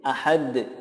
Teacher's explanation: ada tambahan qalqalahnya karena Dal disukunkan menjadi Qalqalah